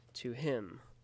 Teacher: a foot where an unstressed syllable is followed by a stressed syllable